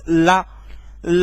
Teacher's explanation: ला बोलोगे तो जीभ हमारी कहीं ना कहीं दांतों पर ही स्पर्श करती है। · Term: दांत वाला